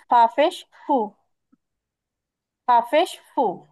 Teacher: জিব্বার আগাটা সামনের উপরের দুই দাঁতের আগার সঙ্গে লাগবে নরম করে বলতে হবে